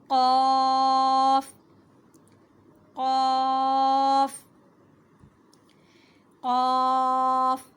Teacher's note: زبان کی جڑ یعنی زبان کا آخر والا حصہ جب تالو سے ٹکرائے تو پر حروف ہے قا، تو اس لیے منہ کو تھوڑا سا گول کر کے ادا کریں گے.